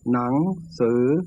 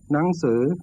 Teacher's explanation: there is a high tone pronunciation used in faster natural speech